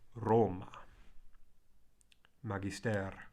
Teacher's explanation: The Latin R trills a little bit. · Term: rolled trill